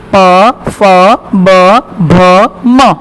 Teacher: प तो देखो हम हमारे प बोलेंगे तो हमारे दोनों लिप्स है, हमारे जो दोनों होठ है वो एक दूसरे के साथ स्पर्श करेंगे, टच करेंगे, राइट। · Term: औष्ठव्य